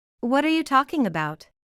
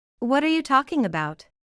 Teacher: Escucharemos a la palabra talking, pronunciada de forma más clara que las demás palabras.